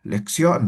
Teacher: Por ejemplo, cuando decimos lección, ¿no? Subimos la entonación